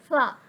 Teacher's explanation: फ जो है वो ऊपर के दांतों के किनारे और निचले हंठ के तर हिस्सा यानी अंदर वाले हिस्से से अदा होगा। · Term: हरूफ शफविया